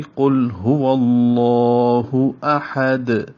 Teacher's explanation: آگے احد، حمزہ زبر آ جلدی سے پڑھیں گے، ہا وسط حلق سے اور جلدی سے پڑھیں گے، اور دال کے اوپر جو دو پیشیں ہیں وہ وقفاً ختم ہو جائیں گی، تو احد دال ساکن ہو جائے گی اور دال ساکن پہ قلقلہ ہوگا، تو پوری آیت ہوگی قل هو اللہ احد۔